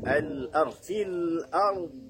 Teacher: Ketika dia waqaf, perhatikan au ya, al-ard fil ard ya, fil ard tidak boleh dipantulkan karena tidak memiliki sifat qala.